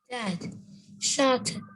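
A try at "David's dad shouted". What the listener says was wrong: David's dad with S, again with S, shouted.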